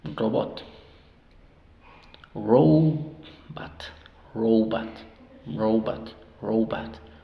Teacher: Sílaba abierta, la primera suena O, row, y la segunda es una sílaba cerrada, por lo tanto esa O suena A, at, robot, robot, robot, robot, robot, robot, until, ¿qué es until?